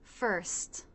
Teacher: Fur. Then we end with the ST consonant cluster. So the teeth come together, the tongue tip goes down. A trick here is rather than raising your tongue tip up for the T, you can leave the tip down, then push the part of the tongue just behind the tip to the roof of the mouth to cut off the air.